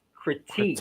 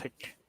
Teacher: So, yung ano niya, yung kanyang stress ay sa second syllable natin. Critique. So, medyo mahaba yung second syllable natin.